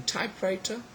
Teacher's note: in typewriter we have got type which is stressed